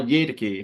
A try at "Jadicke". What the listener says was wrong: It's a hard J, Jadicke, Carl Jadicke.